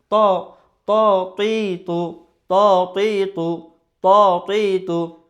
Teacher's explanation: জিহ্বার আগা উপরের দাঁতের যে গোড়া সেখানে লেগে উচ্চারিত হয়